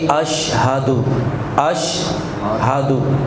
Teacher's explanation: اس میں یہ کمزوری ہے کہ عام جو لوگ ہیں وہ اشہدو پڑھتے ہیں، ہا کو الگ نہیں کرتے، تو اسے پڑھنا چاہیے اشہدو، اشہدو، ہاں جی، اور لمبا بھی نہیں کرنا، اشہادو بھی نہیں کہنا، اشہدو بس۔